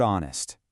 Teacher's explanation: The H is completely silent. So, you're starting the word with an O sound.